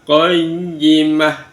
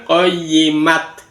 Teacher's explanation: ta marbutah ini kalau dihentikan berfungsi sebagai huruf ha. Qoyimah bukan qoyimat. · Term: tak marbutoh